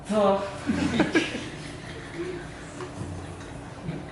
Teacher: to itu mempunyai sifatul huruf yang disebut dengan jahar. Artinya nafas ditahan ketika mengucapkan huruf to. Yang kedua adalah syiddah.